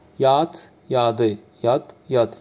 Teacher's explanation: Cingiltili samitlə qutarır. Həm Azərbaycan və Türkiyə türkçəsində.